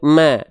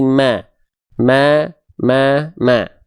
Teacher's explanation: Ma-nya vokal A ya. Berarti tipis, buka mulut sedikit senyum.